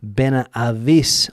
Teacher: Ben Ais because the H isn't pronounced.